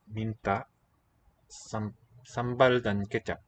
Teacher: we've got both kinds of clusters. Nasal, so N and voiceless T, M and voiced B.